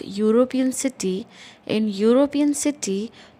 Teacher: In European city, though the word is starting with E, it sounds as in U, Y-O-U. That's why Y is the first sound that you hear, and it is a consonant. That's why we will write a European city.